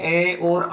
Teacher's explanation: केवल और केवल कंठ से ए और आ स्वर ही उच्चारित होते हैं।